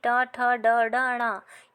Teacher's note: आपकी जो टंग है, जो जीभ है, वह आपके तालू के ऊपरी आगे वाले भाग को स्पर्श कर रही है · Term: मूर्धन्य व्यंजन